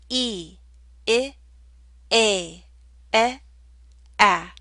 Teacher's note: Your mouth should open more and more as you go through that sequence. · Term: front vowels